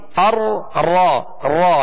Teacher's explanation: تو وہ تکرار، تکرار کا معنی ہوتا ہے بار بار ہونا، کسی چیز کا بار بار ہونا۔ تو اس میں وہ صفت تکرار، یعنی اس کی جو خوبی ہے تکرار، وہ مکمل ادا نہیں کرنی بلکہ مشابہت تکرار ادا کرنی ہے، یعنی مشابہت ہو اس کی۔